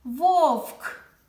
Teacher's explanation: перший звук в слові вовк звук в це твердий приголосний